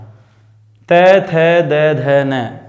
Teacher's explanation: दांतों पर जीभ लगती है, इनको दंत्य कहते हैं